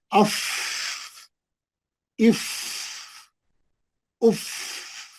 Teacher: हाँ पढ़िए. अफ नहीं, आवाज अफ बोल के पकड़ लेना नहीं, आवाज को जारी रखना. ऐसा अफ इफ उफ, लंबा आवाज.